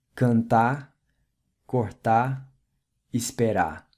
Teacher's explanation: the ''r'' at the end of infinitive verbs like ''estar'' is usually silent—most Brazilians will not pronounce it.